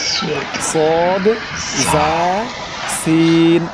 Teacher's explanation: জিহ্বার আগা সামনের নিচের 2 দাঁতের পেট ও আগার সঙ্গে লাগাইয়া উচ্চারণ হয় 3টি অক্ষর সদ, জা, সিন।